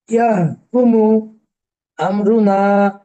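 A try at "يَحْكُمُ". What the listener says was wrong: এখানে হায়ের উচ্চারণটা আরো স্পষ্ট করতে হবে ইয়াহকুমু ইয়াহকুমু মুটান হয়ে যায়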